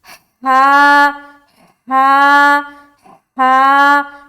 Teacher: جب ہا کو ہم ادا کریں گے نا تو حلق میں سے ایک ہوا کی سی نکلے گی. کس طرح سے, ہوا کی سی, ہا ہا.